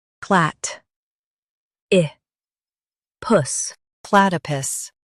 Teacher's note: Stress plat and keep i soft.